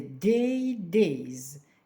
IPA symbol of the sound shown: z